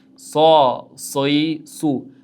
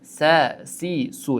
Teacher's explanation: sod harfimiz yo'g'on talaffuz bo'ladigan harf ekan. Sin harfimiz esa ingichka talaffuz bo'ladigan harf edi.